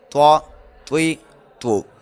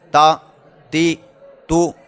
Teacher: توا جو ہے یہ ہم نے پیچھے پڑھا تھا، یہ حروف مستعلیہ میں سے ہے، یعنی اسے ادا کرتے وقت اسے موٹا کر کے پڑھنا ہے، اور تا جو ہے یہ باریک پڑھا جاتا ہے۔